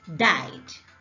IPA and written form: dɑɪd (died)